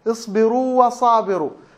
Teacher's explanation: فالواو الأولى بنمدها بمقدار حركتين مد طبيعي